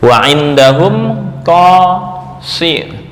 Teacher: Qaf ini hanya huruf isti'la doang tanpa itbaq.